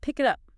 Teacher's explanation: The K sound at the end of pick links to the I in it. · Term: connected speech